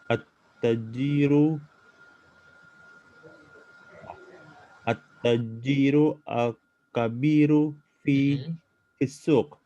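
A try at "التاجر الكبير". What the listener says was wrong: At-tajirul kabiru, taknya panjang. At-tajirul kabiru fi suq.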